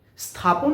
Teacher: কিন্তু স্থাপন স্থাপন শব্দ যে দন্তীয় স আছে এটা কিন্তু তালব্য স এর মত উচ্চারণ হচ্ছে না। এই স্থাপনের দন্তীয় সটা হচ্ছে উপসী। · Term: দন্তীয় স